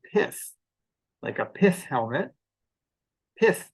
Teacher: because it ends in a th which is a voiceless sound you get a very very short vowel